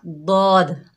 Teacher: देखिए ये ज़बान के मोटे किनारे जिन्हें हाफतुल लिसान कहते हैं, जब ये हमारे ज़बान के मोटे किनारे हमारी ऊपर दाढ़ों से लगेंगे तो एक हर्फ दौद अदा होगा